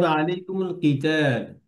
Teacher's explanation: এই কফের নিচে কাসরা থাকার কারণে কফটা একটু লাইট হবে, কিন্তু কাফের মতো একদম না করাটাই ভালো।